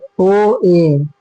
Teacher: इन स्वरों के उच्चारण में मुख आधा बंध रहता है। मुख आधा बंद रहता है। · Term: अध संवृप्त स्वर